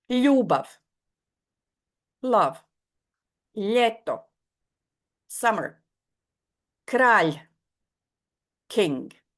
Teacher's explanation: One squeezed sound with the tongue flat against the roof of the mouth.